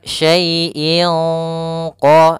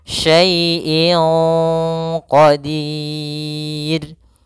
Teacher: karena huruf q huruf istila maka dia ada agak tebal dalam ikhfanya